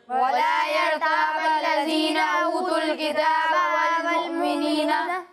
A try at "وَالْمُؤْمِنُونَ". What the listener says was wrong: دیکھیں والمؤمنین نہیں ہے والمؤمنون اور دوسری بات پھر بتا رہا ہوں کہ دال میں سیٹی کی آواز نہیں آئے گی ٹھیک ہے ولا يرتاب الذين اوتوا الكتاب والمؤمنون